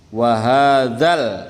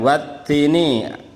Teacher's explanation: ada alif lamnya, L-nya kentara. Bandingkan dengan wattini, L-nya enggak ada. Langsung loncat.